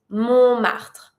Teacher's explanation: We call that Montmartre and you don't pronounce the T.